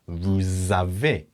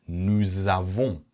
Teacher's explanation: linking the S sound with that vowel to form a Z sound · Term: liaison